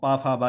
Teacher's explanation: हमारे दोनों होठ आपस में स्पर्श करते हैं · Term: ओस्ट